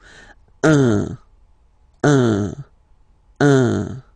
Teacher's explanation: So if you listen to me, you don't hear any N, okay? So it's just a combination of the two.